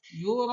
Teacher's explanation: Nah, pada yura'un ini panjangnya sampai 5 harkat ya. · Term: mad wajib muttasil